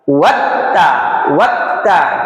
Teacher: ta ini memiliki sifat syiddah tertahannya suara ketika pengucapan huruf tersebut